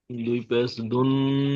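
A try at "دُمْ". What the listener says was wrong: দুন নয়, মিম। দাল মিম দু পেশ দুম। দাল মিমের উপরে তাজদিদ আছে, তাজদিদ যুক্ত অক্ষর দুবার পড়তে হয়। প্রথমে আগের অক্ষরের সাথে বলতে দাল এর সাথে যুক্ত করে পড়তে হবে। তো দাল মিম দু পেশ দুম।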